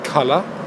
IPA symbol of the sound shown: ə